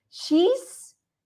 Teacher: Lots of vibration happening in the throat, so we know we're going to pronounce it as she's, with the sound at the end.